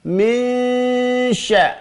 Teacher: nun sukun ketemu shin, namanya ikhfa. Ikhfa hakiki.